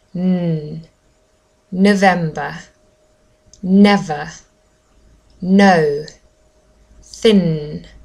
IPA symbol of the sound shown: n